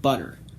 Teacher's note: before an unstressed syllable it'll become more of a quick flap sound